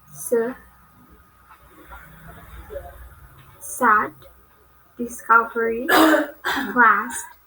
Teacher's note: For example, die, today, at. Next is English consonant S. It belongs to alveolar and fricative.